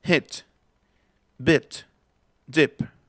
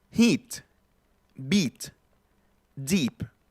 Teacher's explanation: Esta es triste, cerrada, bit. Esta es abierta, beat. Estoy poniendo palabras que en ortografía cambian, pero que en fonética nada más lo único que hace que cambien es la I.